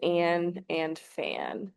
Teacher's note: When a comes before the consonants m and n, the short a sound changes to a different whiny sound